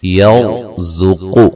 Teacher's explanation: را کو موٹا ادا کریں گے، را ساکن سے پہلے زبر ہے